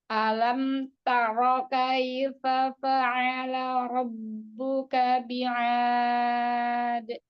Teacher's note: Jadi tebalkan lagi, Bun, karena ro fathah tafhim.